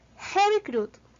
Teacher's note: Seguimos con un sonido más largo que el de una U española, es un poco más extendido. Esto lo podemos ver por los dos punticos que acompañan a la U.